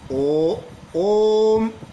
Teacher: जब दूर से किसी को पुकारते हैं तो अंतिम स्वर को खींचकर लंबा कर दिया जाता है और इसी को हम प्लुत स्वर कहते हैं और इसको दिखाने के लिए तीन के अंक का प्रयोग किया जाता है। · ओम में जो ओ की ध्वनि निकलती है थोड़ा लंबा निकलती है। यानी दो से अधिक मात्रा का समय लगा। · इसके उच्चारण में दो से अधिक मात्राओं का समय लगता है। दो से अधिक मात्राओं का क्योंकि जब हम किसी को दूर से पुकारते हैं तो स्वर को लंबा करके आवाज देते हैं।